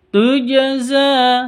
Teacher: Jim ini harus dipantulkan karena sukun atau mati karena Jim ini termasuk hurufnya qqalah tujza seperti itu harus dipantulkan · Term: qalqalah